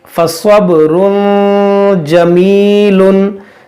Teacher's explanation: 2 पेश की तनवीन है और उसके बाद ये जीम हुरूफ इख्फा है, इसलिए हम यहाँ पर गुन्ना करेंगे।